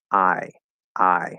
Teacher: the long i is i which is a diphthong and it's called long because you have a one starting point and a different endpoint